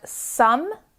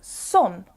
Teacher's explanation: for the word some I have an uh sound but Others May pronounce it as some with an o sound